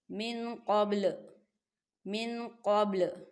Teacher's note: من قبل. با ساکن ہے اور با جو ہے حروف قلقلہ کا ورڈ ہے، تو یہاں پر قلقلہ ہوگا